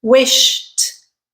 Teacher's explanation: Wish ends with a sh, which is an unvoiced consonant. So you simply add a t sound.